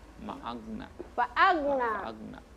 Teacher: Tidak boleh lagi kasih pantul ya, karena huruf goin bukan huruf kolkola.